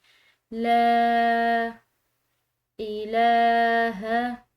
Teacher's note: کھڑی زبر کی وجہ سے اس کو لمبا ادا کیا ہے